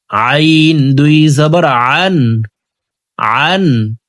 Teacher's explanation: আইন হরফকে হলকের মধ্যখান থেকে উচ্চারণ করব।